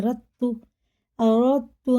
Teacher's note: رت دال بالکل نہیں آ رہا اس میں، پڑھا ہی نہیں جائے گا